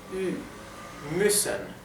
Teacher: u umlout es algo intermedio entre una i y una u